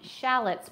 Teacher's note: phonetically in America, it would be shallots, which the emphasis would be on the shall part.